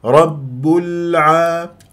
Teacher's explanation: لام العالمين قمريه ولام العالمين ساكنه ويجري فيها صوته فتره زمنيه بسيطه لان من احرف التوسط ل عمر فتسحب لي ضمه الباء رب